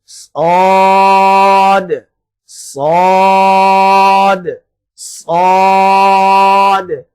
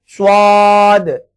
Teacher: آپ نے اس کو پر پڑھنا ہے، موٹا پڑھنا ہے، لیکن اپنے ہونٹوں کو گول نہیں کرنا. آپ کے رخسار اور آپ کے ہونٹ بالکل نارمل رہنے چاہیے، اور صرف آپ کی آواز وزنی ہونی چاہیے، آپ کی آواز موٹی ہونی چاہیے.